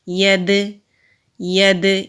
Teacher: دال ساکن ہے تو دال پر کلکلا ہوگا، کلکلا کہتے ہیں آواز کے پلٹنے کو۔ ید ید، یہ آواز کلکلا کہلاتی ہے۔